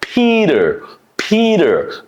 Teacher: Because T is following E vowel and before T there's another vowel. So there are two vowels before and after the T. So U pronounces like a soft D sound. So it sound like a Peter.